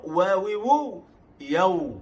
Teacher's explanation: Nampak huruf waw, wawiwu, yaw. Bentuk u atau bulat di hujung makhraj waw.